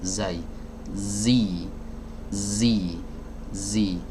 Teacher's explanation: Suaranya keluar dari celah ya antara gigi seri atas dan gigi seri bawah yang didekatkan ini gigi seri atas dengan gigi seri bawah didekatkan nah kemudian